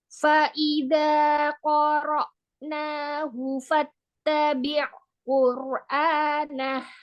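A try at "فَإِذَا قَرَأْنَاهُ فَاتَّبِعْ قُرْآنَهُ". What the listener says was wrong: Huruf ainnya, bainianya tambahkan lagi. Fattabi'. Dialirkan. Fattabi'.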